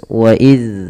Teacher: Zal tempat keluarnya adalah dari ujung lidah kita menempel dengan gigi seri atas. Wa iz, seraya dia kita memiliki sifat yang namanya rokhawah, mengalir suaranya.